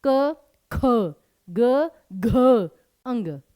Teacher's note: की चलिए पहला वर्ग बोलिए क ख ग घ अंग तो जब आपने क ग अंग बोला तो इजली बोला लेकिन ख और घ पूरा जोर लगाकर बोला